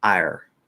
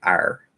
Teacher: So we're not letting the tongue come up to sort of get too close to that Y. We're keeping a little more control and going like ire. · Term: R color it